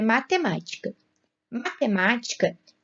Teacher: Matemática tem como sílaba tônica a antepenúltima sílaba.